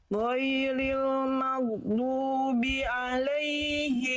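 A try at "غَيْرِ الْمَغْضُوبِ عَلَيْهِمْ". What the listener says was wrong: Jangan bi alaihim, bi la. Ghairil maghdubi alaihim waladhdallin.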